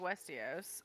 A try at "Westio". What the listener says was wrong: Westio. Oh, not Os.